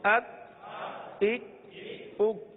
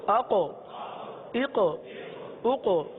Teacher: دیکھیے ایک طرف پہلے کاف پڑھا، پھر دوسری طرف قاف، یہ دو حروف ہم نے پڑھے. کاف کو ہم نے باریک بھی پڑھا، قلقلہ نہیں کیا. قاف کو پر بھی پڑھا اور اس میں قلقلہ بھی ادا ہوا ہے